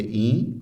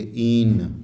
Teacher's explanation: اور دوسرا ہے این، جسے ہم بر صغیر کے لہجے میں کہیں گے این، اور ایرانی لہجے میں کہیں گے این، پورا نون بولیں گے یہ